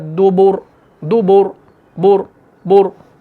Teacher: रॉ को हम मोटा कर रहे हैं, मुंह भर के पढ़ रहे हैं